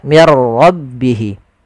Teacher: Ra itu punya sifat namanya sifat takrir, tapi takrirnya hanya satu saja, tidak boleh berulang.